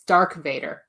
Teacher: darth vader is called dark vader in french because you can't do the th sound really